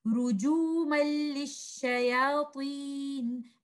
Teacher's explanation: Because now I'm stretching letter lam, I'm giving gunna, which is wrong. I will join letter dal with letter lam, I will not give any gunna, and I will not stretch letter lam.